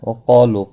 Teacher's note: وقالوا قاف اور الف دونوں پر پڑھے جائیں گے. قاف مستعلیہ ہے اس لیے پر پڑھا جائے گا، اس کے ساتھ الف بھی ہے پر پڑھا جائے گا.